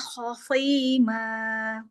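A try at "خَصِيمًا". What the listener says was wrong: Masih. Lidahnya jangan keluar. Nih kayaknya keluar nih lidahnya.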